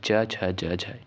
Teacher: च वर्ग के अंतर्गत जो भी आपके वर्ण आते हैं वे तालू से उच्चारित होते हैं